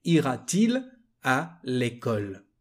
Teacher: Here it's a bit tricky because we've got 2 vowels. So to improve, to better the pronunciation, we add a T.